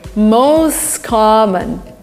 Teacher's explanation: t disappears the words are linked together